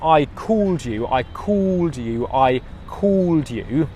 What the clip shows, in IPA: kɔːld